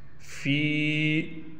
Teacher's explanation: فا کو کھینچیں گے، فا کے بعد یا ہے اور فا کے نیچے زیر ہے تو اس کو کھینچ کر پڑھیں گے 1 الف کی مقدار۔